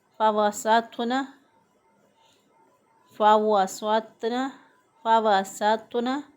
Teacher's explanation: اب سین اس میں باریک ادا ہوگا، سیٹی کی آواز آئے گی، واو کی ادائیگی میں ہونٹ گلائی کی طرف جائیں گے۔